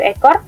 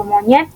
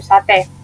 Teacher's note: alofom e Tengah atas tak bundar depan dan e Tengah bawah tak bundar depan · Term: fonem kedua yaitu e